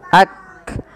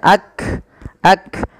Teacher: ketika melafalkan kaf itu yang pertama adalah sifat syiddahnya dulu, tertahannya suara ak. Yang kedua hamas ya ak. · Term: kaf sukun